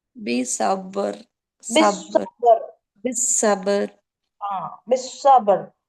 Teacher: அப்போ அந்த ராவை ஹெவி பண்ணி ஓதணும்.